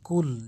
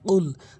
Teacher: কফটা জিহ্বার গোড়া থেকে উচ্চারণ করতে হবে ধাক্কা দিয়ে